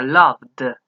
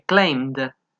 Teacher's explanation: Para todos esos que hay vibración, se va a utilizar el sonido final de la D.